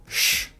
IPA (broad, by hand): ʃ